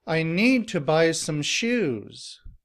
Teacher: Here the stress is on need, buy, and shoes.